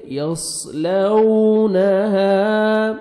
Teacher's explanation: یصلونها، الف مد ہے، 1 سیکنڈ ہا کو کھینچنا ہے اور ہا کو اپنے صحیح مخرج سے ادا کریں گے۔